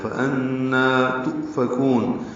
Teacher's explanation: فَأَنَّا میں نون مشدد پہ غنہ ہے اور نون کو 2 حرکات لمبا کرنا ہے، فَأَنَّا تُؤْفَكُونَ، حمزہ ساکن جھٹکے سے ادا ہوگا، فا کو جلدی سے پڑھیں گے، کاف باریک ہے اور اس کو لمبا کریں گے، نون ساکن پہ اظہار ہوگا۔